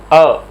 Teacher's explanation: जीभ के मध्य भाग का प्रयोग जिस स्वर के उच्चारण के लिए होता है वो एकमात्र स्वर है अ। इसमें जीभ जो है स्थिर रहती है उच्चारण करने के लिए।